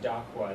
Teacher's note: The K is like a glottal stop.